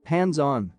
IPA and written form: ˈhændzˈɑn (hands-on)